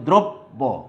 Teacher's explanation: এই যে ওকারের উচ্চারণ হলো, রফলা তো জায়গাতেই থাকবে, এটা তো বাদ দেওয়া যাবে না, তাইলে আবার উচ্চারণ বিভ্রাট হয়ে যাবে। তাইলে আদ্য অয়ের উচ্চারণ উকারের মতো হয়, উকারের মতো হয়েছে, কিন্তু এবং আগের বর্ণের দ্বিত্ব উচ্চারণ হয় না।